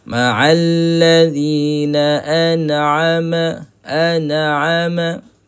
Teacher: Huruf nun jangan kita lantunkan. Sebab nun di sini hukumnya adalah izhar halqi.